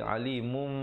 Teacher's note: jadi alimum dengan mim yang nipis saja. Mim bibir itu bersentuhan saja dengan kadar panjang 2 harakat. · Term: iqlab